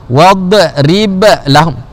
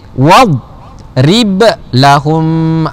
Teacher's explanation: Jadi siapa yang baca tadi wadrib lahum, 2 kali qalqalah, wadrib lahum, maka bacaan itu salah ya. Jadi huruf dad tidak ada qalqalah, matikan dia.